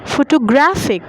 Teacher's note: The last part is stressed.